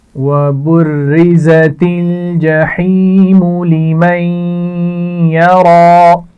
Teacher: را کے نیچے زیر ہے اس لیے اس کو باریک پڑھا جائے گا · زا کے مخرج کا بھی خیال رکھیے، اس میں سیٹی ہوتی ہے